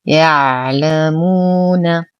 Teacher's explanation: العين ساكنة زمنها أطول من المتحركة